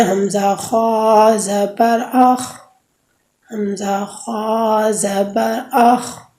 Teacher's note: حلق کے شروع سے جی خا ادا ہوتی ہے